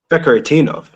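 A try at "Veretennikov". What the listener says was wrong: What Vekaratinov? There's no Tinov. Like, there's no Tinov. It's Veretinikov. Sound it out Kazakhstanian. It's Veretinikov. There's no Tinov, though. That's not how it's spelled.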